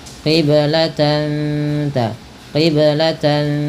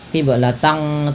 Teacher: dibaca dengan bacaan Ikhfa Hakiki yaitu dengan menyamarkan bunyi tannya kepada huruf ta